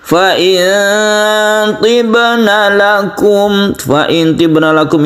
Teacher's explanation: ini kita dengungkan ikhfa hakiki, nun mati bertemu dengan to, ini kita samarkan, kemudian baknya ada di tengah disebut dengan qalqalah sughra.